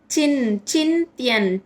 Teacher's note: అక్కడ అనుస్వర ఉచ్చారణ న్ కింద పలుకుతాం అనమాట